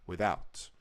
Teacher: you're saying the first syllable of that word so quickly because the emphasis is on the word out, without. So you are going to just kind of speed through it.